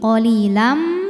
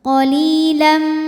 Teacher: Karena ada tanwin fathah menghadapi huruf mim. Maka tanwinnya masuk ke mim qolilam disertai bunyi dengung. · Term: idgham bighunah kamil